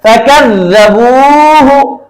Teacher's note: वाव साकिन से पहले अगर पेश आ जाए तो वाव मद्दा बन जाता है, इसलिए उसको खींच कर पढ़ते हैं।